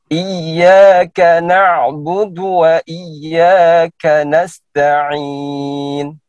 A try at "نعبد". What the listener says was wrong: هنا الدال ليس تاء نعبد لا نعبد دو. إياك نعبد وإياك نستعين. نعبد دو.